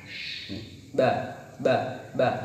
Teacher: Istifal yaitu pangkal lidah tidak bertemu langit-langit. Ba, dirasakan pangkal pada lidahnya tidak bertemu dengan langit-langit.